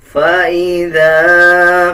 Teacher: ذال کے اوپر زبر ہے اور زبر کے بعد الف آ رہا ہے، 1 سیکنڈ لمبا کیا جائے گا